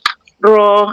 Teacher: ujung lidah macam melengkung, ro melengkung ke atas